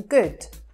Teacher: But in Scottish accents, you will hear that shorter sound as in good.